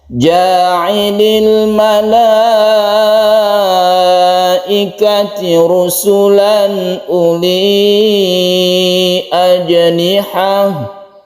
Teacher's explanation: Mat wajib muttasil karena ada la ini panjang, satu alif kalau kita baca mat tabi'i dia, tapi karena bertemu dengan hamzah dalam satu kalimat, dalam satu kata, yaitu kata malaikah ini, maka dibaca mat wajib muttasil sampai 2,5 alif atau sama dengan 5 harokat